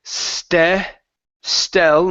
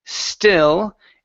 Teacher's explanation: when I say stel, my jaw drops a little bit, and my tongue comes down. It's not touching my teeth. When I say still, it is touching my teeth. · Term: short I